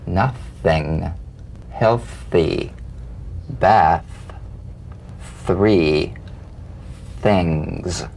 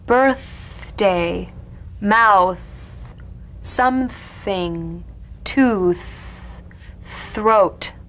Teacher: The unvoiced tongue point to teeth fricative consonant. Play this dry, gentle, whispered lightly and softly without the slightest pressure. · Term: voiceless TH